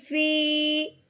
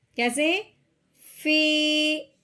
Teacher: دوسری بات، اگر یا ساکن ہو، کیا ہو، یا ساکن ہو اور اس سے پہلے زیر ہو، یا ساکن ہو اس سے پہلے زیر ہو، تو ہم نے اس کو ایک الف کے برابر لمبا کرنا ہے